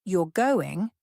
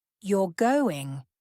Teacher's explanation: For example, you're going with a rising intonation at the end of the sentence is a question.